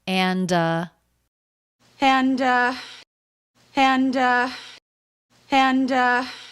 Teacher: and uh there she goes again thinking about what to say fully pronouncing the word and linking the d into the next sound the thinking vowel the uh as in butter and uh and